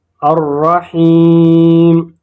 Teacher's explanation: یہاں پر یائی مدہ ہے، اس کو 2 حرکات کھینچیں گے